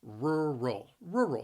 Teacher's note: The word has two syllables, and the stress is on that first syllable, rural. The word is challenging because those two R's in there, rural.